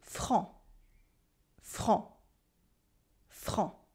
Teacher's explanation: You have a nasal en, and a silent C at the end, even in the plural.